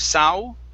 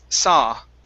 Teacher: the word is saw only with an ah we do not want to pronounce an oo